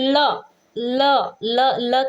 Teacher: इसको उच्चारित करते समय हमारी सांस जो है वो जीभ के बगल, मतलब जीभ के बगल, बगल मतलब पार्श्व से गुजरती है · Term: पार्श्विक व्यंजन